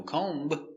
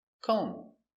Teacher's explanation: The B is silent.